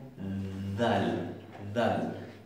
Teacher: en una posición intermedia entre nuestra D y la Z